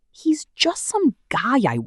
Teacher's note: Hit just and guy hard, and keep the other words fast and light.